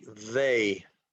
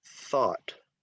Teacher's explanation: Voiced is the eth, like they. Unvoiced is theta, like thought.